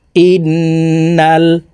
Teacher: এই হামজা তাসদিদওয়ালা নুনের সাথে নাকের বাসি থেকে 3 সেকেন্ড পরিমাণ গুন্নাহ করে ধরে রেখে পড়ব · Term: ওয়াজিব গুন্না